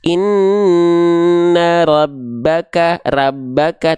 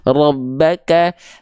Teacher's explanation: Huruf tebal itu tidak keluar dengan bunyi vokal A terdengarnya tapi condong pada vokal O